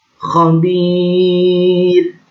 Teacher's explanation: ketika kita membacanya waqaf, maka dibaca khabir, namanya mad arid li sukun, karena matabi'i pada akhir kalimat dibaca waqaf. Panjangnya 2-6 harokat.